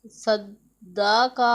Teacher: زبر صد، دال زبر دا، صدا، قاف زبر کا، صدا کا، دال بھی حروف قلقلہ ہے اور مشدد ہے، اسے جماؤ کے ساتھ ادا کرنا ہے